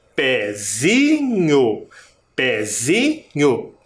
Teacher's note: Parece que o pé é a sílaba mais forte, mas não é.